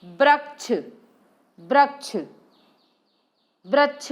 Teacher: श को स, व को ब उच्चारित करते हैं